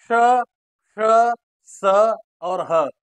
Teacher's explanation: जब हम ऊष्म व्यंजन का उच्चारण करते हैं तो इनके उच्चारण में मुख से निकलने वाली हवा में संघर्ष होता है। संघर्ष के कारण ही हवा में ऊष्मा पैदा होती है, इसीलिए इनको संघर्षी या घर्षक व्यंजन कहा जाता है।